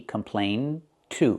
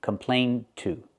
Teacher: When we link with to, we hear the stop D, complain to, and it links together.